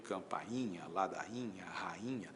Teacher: A e o i de rainha se separam. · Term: iato